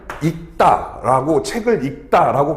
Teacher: 그러니까 뭐냐면 예를 들어서 용언의 어간 발음 리을 기역 같은 경우에 읽다라고 하는 말이 있죠. 이런 경우는 이 경우에는 리을 기역이니까 앞에 있는 리을이 탈락되고 기역이 남죠